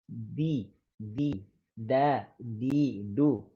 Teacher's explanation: bighairi tanafus ataupun tanpa ada angin. Tahan anginnya. Jangan ada angin mengalir.